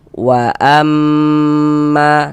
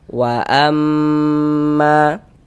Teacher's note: Kita gunnahkan tuh ya kita dengungkan. Jadi di bagian amnya itu suaranya itu kita tahan. Kita panjangkan sejenak, kira-kira sepanjang 2 harokat. Wa amma, nah ditahan seperti itu. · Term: gunnah musyaddadah